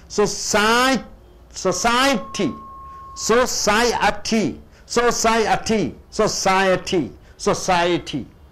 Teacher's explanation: The second syllable should be stressed.